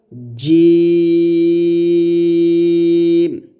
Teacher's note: তারপরে জ এবং জাল এই দুইটা মাখরাজ সেমি, জিহ্বাটা উপর দাঁতের আগায় লাগাতে হবে, আর জিম উচ্চারণ করার সময় জিহ্বা যেন কোনোভাবে দাঁত না লাগে, জিহ্বার মধ্যখান তার বরাবর উপরে তালুর সঙ্গে লাগাতে হবে